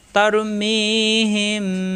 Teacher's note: মিম সাকিনের পরে বা থাকলে গুণ্য হয়